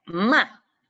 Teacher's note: El cuarto tono es descendiente y rudamente